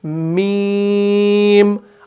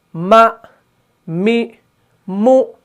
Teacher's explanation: मीम को अदा करते वक्त क्या हो रहा है कि नाक के बांसे में भी थोड़ी सी आवाज़ गूंज रही है।